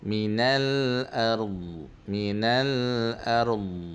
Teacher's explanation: Dha tu dia bersifat al-istitalah, dia memanjangkan sebutan dha tu.